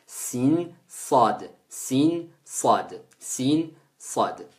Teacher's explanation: Si vous regardez bien lorsque vous dites sin ou sad, le taraf al-lisan, l'extrémité de la langue, vient se placer dans ce qu'on appelle la face interne des incisives inférieures